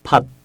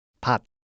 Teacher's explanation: 피읍 소리는 비읍 소리에 비해 발음할 때 바람이 많이 나오기 때문에이 특징을 위첨자 h 표기를 했습니다